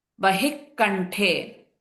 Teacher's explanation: So in this one, in the first line, Nilagriva Bahih, the Visarga is there. Visarga followed by K will change to HK sound.